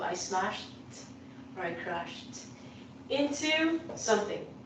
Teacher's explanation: The pronunciation of these words in the past, because it is a sh, unvoiced sound, is going to sound like a t.